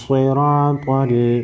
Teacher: हमज़ा हा ज़ेर एह, दाल ज़ेर दी, नून अलिफ नून स्वाद ज़बर नस, एह दिनस स्वाद ज़ेर सग़ीरा, अलिफ ज़बर रा, त्वा लाम ज़बर त्वल, एह दिनस सिरातल। स्वाद और त्वा हुरूफ मुस्तालिया को मोटा पढ़ेंगे।